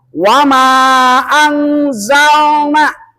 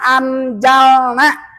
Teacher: Perhatikan nunnya yang bulat itu tanda ma mati. Ke depannya ada huruf zai. Maka menurut hukum adalah harus dibaca dengung. Nama hukumnya adalah ikhfa.